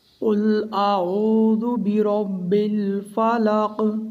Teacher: آخر میں قاف میں قلقلہ ہوگا۔ قلقلہ کہتے ہیں حرف کو ہلا کر پڑھنا۔